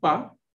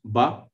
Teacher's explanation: while pronouncing PA there is hardly any vibration but if you pronounce ba you see there is some kind of you know vibration